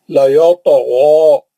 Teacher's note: دونوں مستعلیہ کے ہیں، تو غین موٹا پڑیں گے